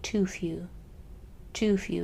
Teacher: You'll notice that this U came out as oo naturally because of the shape of my mouth when it made the T.